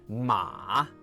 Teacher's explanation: They show you this perfect valley curve, medium, down low, back up high. They teach 马, horse, with that full dip and rise.